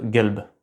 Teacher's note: Il s'agit du son q prononcé au fond de la gorge, et il est prononcé g dans une grande partie du monde arabe